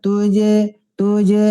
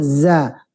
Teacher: Jim Tengah lidah Zai di ujung lidah